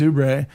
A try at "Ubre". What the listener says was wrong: It's just Oob. The R is silent.